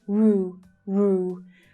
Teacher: So the first syllable you have the /uː/ as in 'shoe' vowel sound